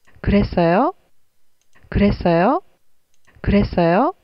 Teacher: just a rising pitch means that it's a yes or no question.